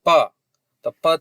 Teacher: हवा भी कम निकल रही है और कंपन भी कम हो रहा है, इसलिए ये क्या है? अघोष है और अल्प प्राण है।